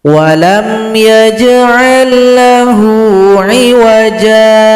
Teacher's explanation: Tapi kalau berhenti kita boleh saja tanpa pakai sakta ini. Kalau berhenti panjangkan jim dua harokat karena mad iwad.